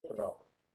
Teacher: ¿Y dónde recae el acento de zorro? En la primera O.